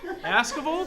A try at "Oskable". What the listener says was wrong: Yeah, it's like an O. The A is like an O.